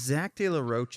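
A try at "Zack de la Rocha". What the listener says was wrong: That's not how you say his name. Zach De La Roca. The A A at the end.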